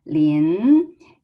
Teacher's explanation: second tone is rising tone. So will be Lin, and then Na, it's a fourth tone.